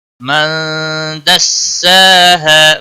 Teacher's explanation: من نون ساکن کے بعد حروف اخفا کا حرف آیا ہے، اس لیے اخفا حقیقی ہوگا۔ سین کے اوپر کھڑی زبر ہے، ایک الف کے برابر کھینچ کر پڑھیں گے۔